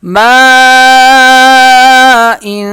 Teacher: یہ مد جو ہے اس کی کھینچنے کی مقدار 5 الف کے برابر ہے۔ 5 الف کے برابر یہ کھینچ کے پڑھا جاتا ہے۔